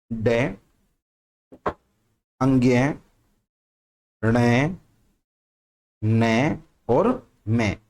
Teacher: इन सब का उच्चारण नाक की सहायता से होता है। तो ये सब कैसे हैं, हमारे नासिक्य।